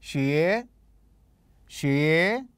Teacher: النغمة الثانية لأن مستوى الصوت كان صاعد إلى الأعلى